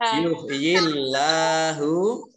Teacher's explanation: Allahnya dibaca tipis karena huruf depannya kasroh